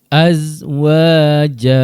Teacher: Alif mad sebelumnya huruf yang berbaris atas menjadi bacaan mad asli yang perlu dibaca dengan kadar dua harakat. Wau baris atas bunyinya wa dibaca dengan kadar dua harakat.